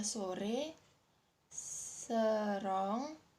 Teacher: Vokal ini dihasilkan dengan daun lidah dinaikkan, tetapi akan lebih rendah daripada posisi lidah untuk menghasilkan vokal I. Vokal sedang rendah itu diiringi dengan bentuk bibir yang netral, artinya tidak terentang dan juga tidak membundar. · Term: vokal sedang depan